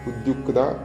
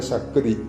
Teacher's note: ക് ത എന്നാണ് ഞാൻ ഉച്ചരിച്ചിട്ടുള്ളത്